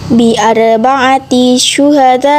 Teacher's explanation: Huruf ra dibaca tafkim sebab disukun oleh fathah.